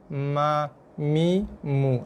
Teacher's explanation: Huruf mim sentuh tapi tak tekan. Mim lembut je. Sentuh je, bersentuhan aja.